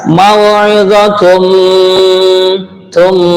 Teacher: tanwin berjumpa dengan mim idgham bihun